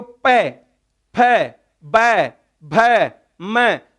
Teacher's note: पवर्ग बोल के देख सकते हो, पै, फै, बै, भै, मैं, सबके अंदर दोनों ओष्ठ टकरा रहे हैं। यदि एक भी ओष्ठ नहीं हो तो इनको नहीं बोला जा सकता।